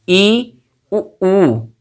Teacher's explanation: ई, उ, ऊ में हमारी जो जिह्वा है वो अधिकतम ऊंचाई तक जाती है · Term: समृद्ध स्वर